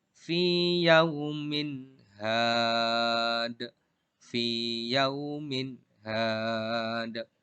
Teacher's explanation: Tanwinnya dibaca jelas karena ketemu dengan huruf H. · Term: idhar